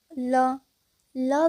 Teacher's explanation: ल व्यंजन का उच्चारण करते समय हवा जीभ के बगल से निकल जाती है और ल को पार्श्विक व्यंजन भी कहते हैं।